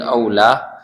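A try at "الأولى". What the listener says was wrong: ula. Bedanya ula sama aula apa? Ula yang pertama, kalau aula yang lebih utama, beda.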